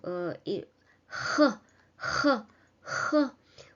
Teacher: So next we are moving to the letter H, which produces the sound which corresponds to English H sound, maybe a little bit more energetic, h, with a bigger force than in English.